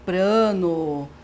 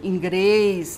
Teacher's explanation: a pronúncia do lê como rê, principalmente nos encontros consonantais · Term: rotacismo